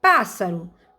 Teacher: então a sílaba mais forte é a antepenúltima sílaba